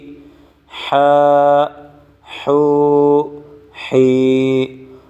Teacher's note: ح کو گلے سے نکالنا ہے